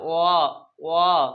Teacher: আমাদের ঠোঁটটা একদম কুঞ্চিত হয়ে যাচ্ছে, গুটিয়ে যাচ্ছে। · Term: কুঞ্চিত বা বর্তুল স্বর